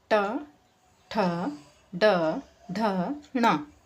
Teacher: ये भी पैलेट का ही पार्ट होता है, लेकिन आगे का होता है। और ये जो हमारी टंग होती है वो उसको टच करती है, हमारे आगे के पार्ट को, पैलेट के आगे के पार्ट को, जो हार्ड सा होता है। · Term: मूर्धा